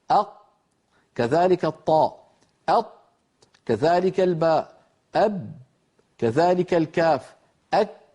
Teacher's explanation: كل هذه 8 عند نطقها وهي ساكنة ينقفل المخرج تماما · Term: الأحرف الشديدة